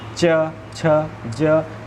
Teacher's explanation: हम बात करते हैं अगर कवर्ग के बारे में, तो वो कंठ से होकर स्पर्श होकर क, ख, ग, घ, ये हवा जो होती है कंठ को स्पर्श करके च, छ, ज, ये क्या होते हैं, जीभ बार बार कहाँ जा रही है, तालु पर छू रही है और हवा भी तालु को छू कर निकलती हैं, तो ये तवर्ग तालव्य हुए।